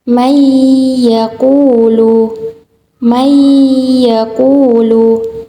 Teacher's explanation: Idgham bila gunnah adalah nun sukun atau tanwin yang bertemu dengan huruf ya, nun, mim, waw. Cara membacanya dengan meleburkan nun sukun ke huruf berikutnya dan disertai gunnah 2-3 harokat